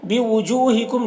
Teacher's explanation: जू में भी वाव मद्दा है, और मीम में इजहार शफवी हो रहा है